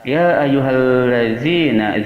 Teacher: Ya ayyuhallazina, za berada di ujung lisan yang disentuhkan pada ujung gigi seri atas